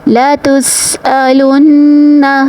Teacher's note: سین کو سیٹی کے ساتھ ادا کرنا ہے اور نون کے اوپر پھر سے تشدید آ گئی تو ہم نے غنہ کے ساتھ ادائیگی کرنی ہے۔